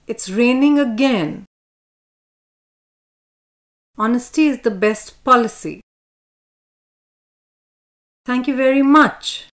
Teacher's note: that in each sentence no word is specially important and so the speaker has chosen the stress syllable of the last important word as a nucleus